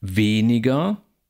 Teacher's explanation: das e in weniger ist lang gespannt betont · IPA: ['veː.nɪ.gɐ]